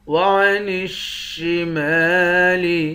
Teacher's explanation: نون کو شین کے ساتھ ملا کر شین کو سختی کے ساتھ جمع کر پڑھیں گے